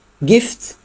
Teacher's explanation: menghembuskan udara, gift dan tidak ada getaran di tenggorokan. Itu namanya voiceless